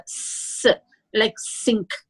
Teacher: When we say the s, like sink, s sound, it is a linguodental. We are just pushing the air.